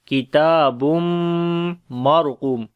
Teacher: So ra we read in heavy sound because ra has a sukun sign, and there is fatha on the before letter